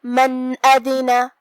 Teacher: الف حروف الاظہار میں سے ہے اور اظہار کا معنی ہے ظاہر کرنا، تو ہم یہاں نون ساکن ظاہر کریں گے اور بغیر غنہ سے حکم کو ادا کریں گے